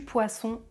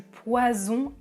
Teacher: le s est appelé une consonne fricative alvéolaire sourde alors que le Z est appelé une consonne fricative alvéolaire voisée · le S les cordes vocales ne vibrent pas le Z les cordes vocales vibre